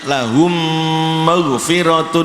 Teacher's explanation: Mim sukun diikuti oleh mim sama dengan mim tasdid